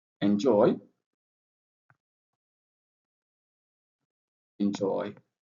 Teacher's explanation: joy is pronounced louder than the end. So we write it like this in and then joy capital.